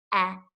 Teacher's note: Again, my tongue is pressing against my bottom teeth, eh. But my tongue might be a little bit flatter on the short E